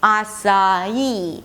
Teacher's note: the third syllable is just 'ee'. It's the primary stress, so it's going to be higher in pitch.